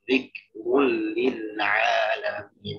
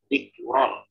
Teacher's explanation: Kalau nggak mencucu, nggak monyong atau nggak sesuai dengan bagaimana kata bommah yang semestinya, jadi kedengarannya kayak fathah.